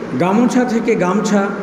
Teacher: আদিস্বরে শ্বাসাঘাত হেতু মধ্যস্বর বা অন্তঃস্বর লোপ।